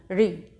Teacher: ये ठीक है, ये ऋषि वाले री की मात्रा है। तो इसका उच्चारण हमेशा जो शुद्ध उच्चारण होता है वो मूर्धा से किया जाता है, जिससे इसकी आवाज़ होती है री।